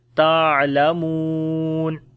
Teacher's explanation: کلا سوف، واو لین ہے، تعلمون، اسی طریقے سے عین کے اندر جو ہے توسط ہوگا، میم کو لمبا کریں گے، واو مدہ ہے اور جب رکیں گے تو مد عارض ہو جائے گی